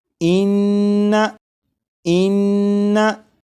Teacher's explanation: नून मुशद्दद की अदायगी के वक्त ज़बान तालू से लगेगी, इस बात पर गौर करिएगा।